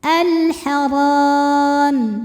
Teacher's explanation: Karena alif lam menghadapi huruf qamariah yaitu ha. Maka lam sukun dibaca jelas. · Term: alif lam qamariah